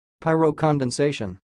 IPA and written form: paɪroʊˌkɑːnˌdɛnˈseɪʃən (Pyrocondensation)